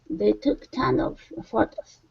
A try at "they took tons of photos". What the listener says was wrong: give me an S here tons of